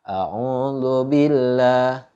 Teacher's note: baca kalimat Allahnya itu dibaca tipis Yaitu dibaca tarqiq bacalah Audzubillah sebelum lafadz Allah ada kalimat di kasroh jadi bacanya tarqiq dibacanya tipis